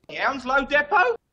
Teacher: Not by everyone, but some people in the UK will pronounce this depot, meaning the E at the beginning is pronounced like a E sound, depot. And the T at the end is silent.